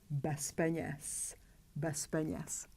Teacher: We have a group of two consonants. P is voiceless, therefore Z has to be pronounced as its voiceless pair S.